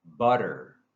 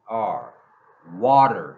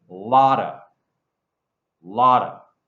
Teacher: often when there's a T sound inside of a word, for example, butter, butter. It sounds like a D.